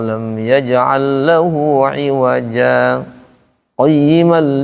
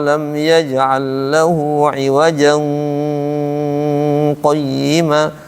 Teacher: jadi saktah itu untuk menghindari ikhfa karena kan di situ ada iwajan tanwin kan ketemu dengan qayima ketemu dengan qof jadi ikhfa tidak boleh